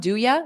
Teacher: Native speakers will commonly drop the U to a ya. They'll reduce the sound.